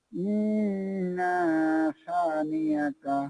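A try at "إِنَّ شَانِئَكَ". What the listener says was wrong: যে ইন্না এখানে কোনো টান হবে না, এখানে হবে ইন্না ইন্না শানিআকা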